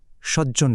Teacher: ব্যঞ্জনধ্বনির ক্ষেত্রেও ঠিক একই রকম বিক্রিয়া ঘটে। যেমন ধরুন, সৎ শব্দের শেষে ত আর জন শব্দের শুরুর জ, এই দুটো মিলে তৈরি হয়ে যায় জ, আর এভাবেই আমরা পাই সজ্জন শব্দটি।